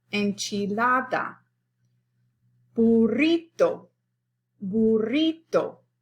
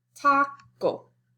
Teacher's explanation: In Spanish, the natural stress is on the second to the last syllable.